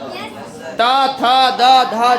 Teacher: कि त था का उच्चारण दांत के स्प से होता है देखो हमारा जीभ दांत में सटेगा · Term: दांत के स्पर्श